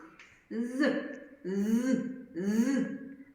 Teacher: звук з приголосний він вимовляється твердо коли сам